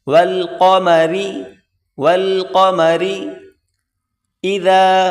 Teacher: بڑی قاف اس کو موٹا کریں، را کو باریک کریں